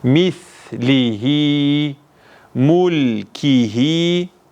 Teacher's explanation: buradaki bu zamir yani kelimenin sonundaki H harfini bir elif miktarı ile uzatmak